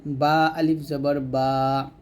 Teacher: বা টা দুই ঠোঁটের ভিজা অংশে মিল করে উচ্চারণ করবেন